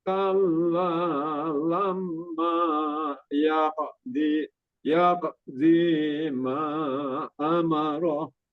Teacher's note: Lamnya kurang ditahan, qafnya qalqalahnya disempurnakan lagi. · Jangan di tapi di. Terus ma-nya ini panjang 45 harokat gitu.